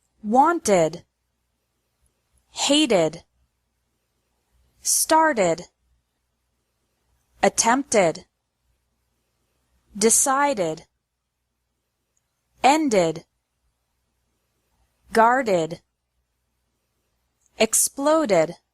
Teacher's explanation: Ed is pronounced like Ed with an extra syllable after verbs ending in a t or a D sound